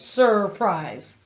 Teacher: we notice in the first syllable or word part the vowel sound is er that's an r control vowel sound